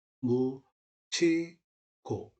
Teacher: 디귿하고 히읗이 결합되면 티읕이 되겠죠. 그리고서 그 티읕이 뭘로 발음이 된다? 치읒으로 발음이 된다. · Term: 구개음화